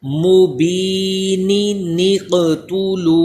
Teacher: نون قطنی پڑھا جائے گا اور قاف اس میں قلقلہ بھی ہوگا